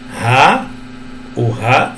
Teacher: tem som de H ou de R, tá? De um R mais fraco, mais brando